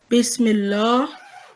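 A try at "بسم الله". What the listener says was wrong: Not the thick sound, the thin sound. Bismillah.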